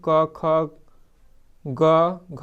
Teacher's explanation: क वर्ग में क, ख, ग, घ सब आता है। तो इसका उच्चारण स्थान होता है कंठ। क से कंठ, क से क वर्ग।